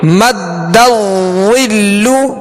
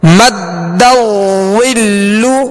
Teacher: دال مشدد ہے، دال کو اس میں جماؤ خوب جماؤ کے ساتھ ادا کریں گے.